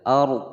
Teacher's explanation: ada ra sukun ya, sebelumnya fathah dibaca tebal